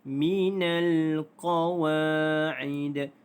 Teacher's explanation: Qawa wa dibaca panjang 2 harakat kerana mad asli huruf alif. Qawa'id. Dal ini dimatikan kerana waqaf, maka dia adalah qalqalah.